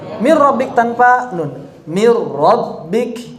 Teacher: Ra-nya tipis atau tebal? Langsung tebal karena sudah idgham.